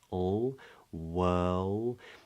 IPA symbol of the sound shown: l